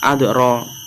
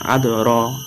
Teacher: dal termasuk huruf qalqalah dan tempatnya di tengah-tengah ayat, maka disebut qalqalah sugro, yaitu dibaca tipis. Adoro dipantulkan, adoro, dalnya tipis.